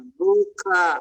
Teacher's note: ख के साथ ह बोलना चाहिए, ख के साथ ख के बिना, ख के पहले बोलना है।